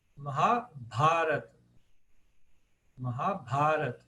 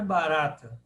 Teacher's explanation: O terceiro A de trás para frente é o longo.